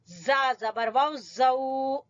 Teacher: यऊमा इजिन, जा जबर वाउ जऊ, जबान की नोक और सामने वाले दो दांतों की अंदर की तरफ लगेगा। नीचे वाले दो दांत और ऊपर वाले दोनों दांतों के अंदर की तरफ।